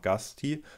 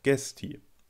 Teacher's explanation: Im Ahd. hat sich der Stammvokal von manchen Wörtern, etwa der Pluralform gasti, von a zu e verändert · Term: Primärumlaut